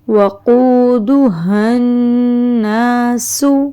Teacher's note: سین باریک آواز، سیٹی کی آواز نکالنی ہے